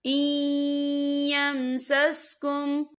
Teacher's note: این یمسسکم، یا دیکھیں این یہاں نون ساکن ہے، نون ساکن کے بعد جو ہے یا آ رہا ہے، اور یا جو ہے حروف یرملون میں سے ہے تو یہاں پر ادغام ہوگا، تو ہم اسے تھوڑا سا غننے کے ساتھ پڑھیں گے۔